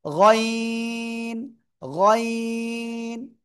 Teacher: গলার শেষ ভাগ থেকে উচ্চারণ হবে তিন আলিফটা নিয়া